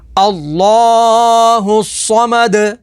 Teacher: صاد زبر صا، میم زبر ما، صما، دال پیش دو، صمدو، آگے وقف صمد، وقف تام کی وجہ سے دال کو ساکن کر دیں گے، دال حروف قلقلہ میں سے ہے تو یہاں پر قلقلہ ہوگا۔